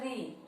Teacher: तो री भी मूर्धन्य के अंतर्गत आता है